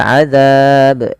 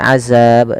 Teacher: Kemudian pelafal adzab ini jangan diganti dengan azab dengan huruf zai tapi dia huruf dalal kecil yang mana makhrajnya dari ujung lidah kita menempel dengan gigi dari atas kita